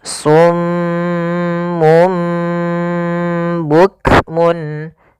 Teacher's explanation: Maka pertama ditahan dulu suara m-nya karena dibacaan gunnah. Kemudian ketika lafal mum itu langsung matikan di sini dan ditahan suara gunnahnya. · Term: iqlab